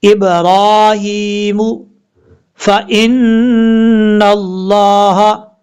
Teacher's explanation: نون کے اوپر شد غنہ کریں گے ایک الف کی مقدار